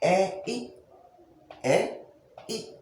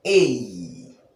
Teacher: the movement in pronunciation from the initial sound to the second is what is called syneresis or glide in linguistics